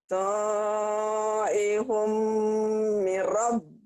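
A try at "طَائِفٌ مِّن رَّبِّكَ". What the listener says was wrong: Bukan, mirnya kan nyambar.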